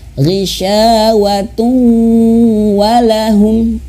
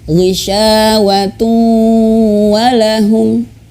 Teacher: dengung ditahan 2 harakat